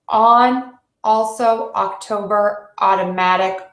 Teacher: the ah is an oval shaped mouth that's very open and that's the short o sound